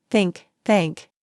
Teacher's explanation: Put your tongue gently between your teeth and blow air out for the voiceless sound.